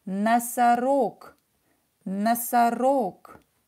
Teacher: And G become unvoiced K. Because it's in the end of the word.